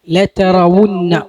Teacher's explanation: വാവ് ഉച്ചരിക്കുമ്പോൾ ചുണ്ട് കൂർപ്പിക്കണം അല്ലെ. ലതറവുന്ന ചുണ്ട് വൃത്താകൃതിയിലാകണം.